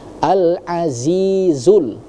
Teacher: huruf zanya itu jangan lari ke huruf dza ya karena ada dua, ada dza yang kecil, ada za yang lebih tebal